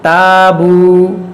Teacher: अलिफ से पहले ता बारीक हर्फ है तो ये अलिफ भी बारीक होगा